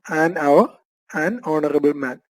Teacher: കാരണം അവർ ഓണറബിൾ മാൻ എന്നിങ്ങനെയുള്ള വാക്കുകൾ ആരംഭിക്കുന്നത് എച്ച് എന്ന അക്ഷരത്തിൽ ആണെങ്കിലും ഈ സാഹചര്യങ്ങളിൽ എച്ച് ഉച്ചരിക്കുന്നില്ല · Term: എച്ച് സൈലൻറ്